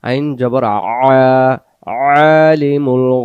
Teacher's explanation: আইন অক্ষর গলা চাপ দিয়ে উচ্চারণ করতে হবে